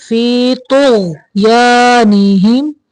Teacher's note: تو کو موٹا پڑھنا ہے، غین کو بھی موٹا پڑھنا ہے لیکن اس کو کلکلا نہیں کرنا.